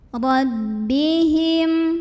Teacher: Ra dibunyikan secara tafkhim karena ra-nya berbaris fathah. Maka bacanya tebal dengan cara mengangkat pangkal lidah kita.